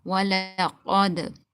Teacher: dal, you have to do qalqala here, a bouncing sound.